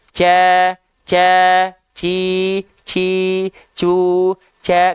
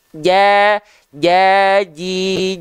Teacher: Tengah lidahnya kita sentuhkan ke arah langit-langit di atasnya nempel betul-betul tidak boleh ada jarak di antara tengah lidah dan langit-langitnya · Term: huruf Jim